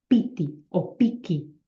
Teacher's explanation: Primero tiene una M y luego una K. Pues esta K contagia el primer fonema y el niño ya directamente hace piti o piki. Lo hace todo oclusivo.